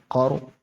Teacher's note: را موٹا ہوگا کیوں را ساکن سے پہلے زبر ہے. جیسے را پر زبر یا پیش ہو تو را موٹا ہوتا ہے، ایسے ہی را ساکن سے پہلے زبر یا پیش ہو تو را موٹا ہوتا ہے.